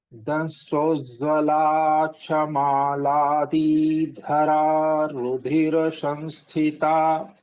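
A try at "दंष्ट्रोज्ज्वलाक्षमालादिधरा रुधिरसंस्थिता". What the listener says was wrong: In the Akshamala Didhara, again, see the one I'm pointing out with my mouse, the Maladi, this is Hasva Swara. So, Maladi is wrong here. Maladi Dhara. मालादिधरा.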